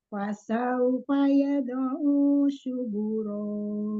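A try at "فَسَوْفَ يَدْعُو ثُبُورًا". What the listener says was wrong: Sa-nya keluarin ujung lidah. Suburon. Fa nggak ada mat. Fasaufa yad. Suburon.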